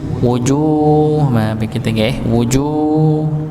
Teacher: kita temukan ada huruf jim dengan dhammah dan dia panjang dikarenakan dia bertemu dengan wawu sukun. Ya, jadi pasangannya wawu sukun adalah dhammah atau u.